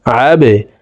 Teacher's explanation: আইন বা জবর আবে, বা কলকলার হরফ নিচের দিকে ধাবিত করে ধাক্কা দিয়ে উচ্চারণ করব।